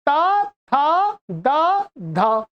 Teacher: दांतों में जिह्वा टच हो रही है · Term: तवर्ग